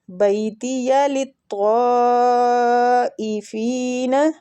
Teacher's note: بیتی یا لین ہو رہا ہے، بیتی للطائفین، طا کے اوپر جو مد ہے نا یہ مد واجب متصل ہو رہی ہے تو اس کو کھینچنے کی مقدار 4 حرکات ہے